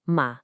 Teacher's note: E o quarto tom, má, é descendente, rápido e vai do agudo direto pro grave, como dar uma ordem bem firme.